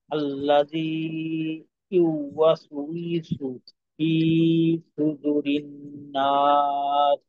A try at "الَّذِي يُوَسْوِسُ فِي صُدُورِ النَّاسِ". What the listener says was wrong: আচ্ছা, বেশ কয়েক জায়গায় টান এলোমেলো হয়ে গেল। প্রথমত, আল্লাদি ইউয়াস উইসু, ইউয়াস উইসু, এটা একটা শব্দ। এই শব্দটাকে যুক্ত রাখতে হবে যেন আলাদা আলাদা হয়ে না যায়। ইউয়াস উইসু, আল্লাদি ইউয়াস উইসু। দু টান হবে না? দু, এই যে দাল ওয়াও পেশ দু।